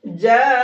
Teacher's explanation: मद्दे मुत्तसिल को खींचते हैं 4 से 5 अलिफ की बराबर